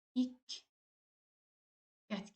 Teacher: Diqqət sözündə də Q samitini biz ilk Q samitini K kimi tələffüz edirik, yəni ilk qət kimi tələffüz edirik.